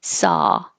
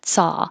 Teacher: the jaw is very open and the tongue is very flat